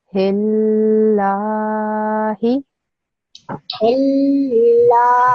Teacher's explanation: when you say the lam sound, you need to make it 2 seconds long. So it will be hil.